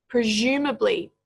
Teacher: The S here actually makes a j sound.